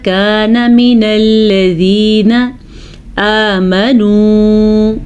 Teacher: آمنوا کو کھینچنا ہے کیونکہ واو مدہ ہے